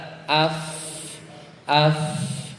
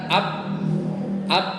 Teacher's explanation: tapi Fa kalau disukunin itu sama ada udara AF AF Karena makhrajnya itu adalah gigi seri atas bertemu dengan bibir bawah yang senantiasa basah